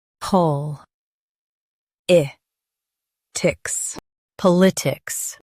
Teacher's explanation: Emphasize pol and keep itics smooth.